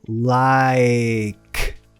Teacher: O começo da palavra tem um I relaxado.